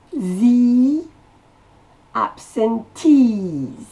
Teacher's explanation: La syllabe accentuée, c'est le tease.